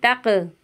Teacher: क़ाफ की आवाज़ जो है वो पलट कर आएगी